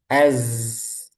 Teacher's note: Hati-hati zai jangan sampai ketika sukun nanti ujungnya itu ke sin.